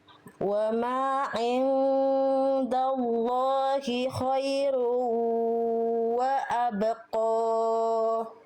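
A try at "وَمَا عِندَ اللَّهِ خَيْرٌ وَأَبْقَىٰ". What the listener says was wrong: Khairu, kasih dengung. Ketika meleburkan domatain ketemu wau, lebur dan dengung. Khairu, sengau.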